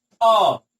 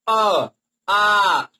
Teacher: देखिए आ में ज्यादा टाइम लग रहा है। अ बहुत जल्दी हम बोल दे रहे हैं, जैसे आ थोड़ा ज्यादा टाइम लग रहा है ना, तो ये आ वाला नहीं होगा आपका, ये अ वाला होगा, जैसा कि हम आपको बताएं।